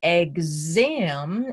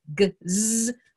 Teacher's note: But if I take an exam and I've accented the vowel after the X, it's going to make the X gzz. Those are voice sounds.